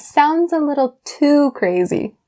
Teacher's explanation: I stressed too, but also drag it out a little bit longer